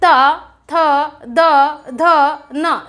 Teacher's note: यहाँ पर देखेंगे त, बोलकर देखिए आप लोग खुद बोलकर देखिए, त थ द ध न। देखिए सबसे ज्यादा कहाँ टच किया, ऊपर वाले दांतों को जिह्वा ने टच किया, इसीलिए इसको क्या कहते हैं, स्पर्श व्यंजन कहते हैं।